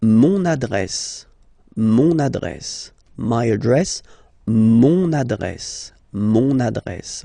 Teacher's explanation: you can hear now this little link, so you've got to pronounce this N